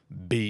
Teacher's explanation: B because it has a it's engaged in those vocal chords if you put your hand on your throat you can feel B you can feel the vibrations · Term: labial voiced